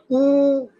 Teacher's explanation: उ ओ हो होठ गोल हो रहे है ना